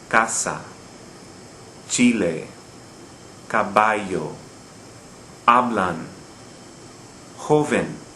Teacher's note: Notice the stress on the second to last syllable.